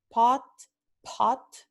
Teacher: principio de palabra, como acabo de decir, pot, pot, es donde tenemos la aspiración